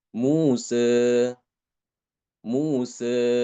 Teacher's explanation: Lebih cenderung kepada fathah itu namanya taklil. · Jadi fathahnya dimiringkan sedikit ya. Dicampur sedikit dengan kasroh ya. Tapi tidak banyak ya, sedikit.